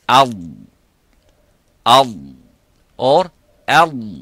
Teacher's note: Up, it stops completely. Okay, but for the dad, it doesn't stop completely, but release slightly towards the front, towards the makhraj of the lam, but it doesn't touch the front of the top front of the mouth.